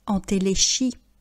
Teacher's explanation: Vous remarquez que le CH ne se prononce pas qui, mais che, entéléchie